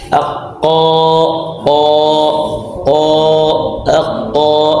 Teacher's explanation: jadi pangkal lidah kita ke atas sentuh langit-langit atas yang lembut yang akhir yang belakang · sebab tebalnya dikarenakan makhrajnya pangkal lidahnya ke atas itu yang menyebabkan tebal yang menyebabkan ada vokal huruf o di